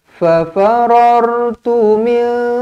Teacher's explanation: nun kosong bertemu dengan kaf didengungkan dua harokat